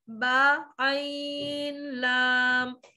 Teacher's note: اب آپ لوگ با عین لام ایسے نہیں پڑھنا, با چھوٹا رہے گا قدرے, اور عین اور لام کو کھینچ کے پڑھیں گے